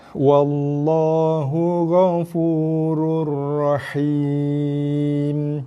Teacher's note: Sebab pertemuan baris 2 dengan ra. Baris 2 tanwin jumpa ra, kita baca rur-ra.